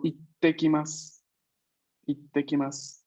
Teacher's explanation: la pausa, digamos, entre comillas, está cuando duplicamos la T. No está antes de la I. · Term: duplico la consonante